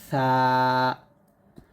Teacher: জিহ্বার আগা উপরের দাঁতের আগার সাথে লাগিয়ে পাতলা করে